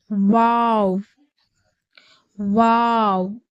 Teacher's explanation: தொண்டைக்கும் வாய்க்கும் இடைப்பட்ட காலியான பகுதியிலிருந்துதான் வாவுடைய உச்சரிப்பு வெளியாகிறது வாவை இரு உதறி குவித்து வைப்பது போல் உச்சரிக்க வேண்டும் வாவ் வாவ் அடுத்து